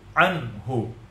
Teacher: Dia izhar halqi. Cara bacanya jelas tanpa dengun. Jelas nunnya an.